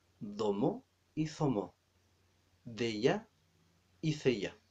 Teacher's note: la letra d y z se llama fricativo o interdental